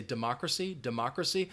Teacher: I actually pronounce that first syllable also with a bit of a schwa sound